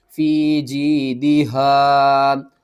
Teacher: یہاں پر بھی یا ساکن سے پہلے زیر ہے، اس کو بھی آپ نے ایک الف کے برابر کھینچنا ہے. ہا کو آپ نے حلق کے سب سے نیچے والے حصے سے کھینچ کر پڑھنا ہے بھاری آواز کے ساتھ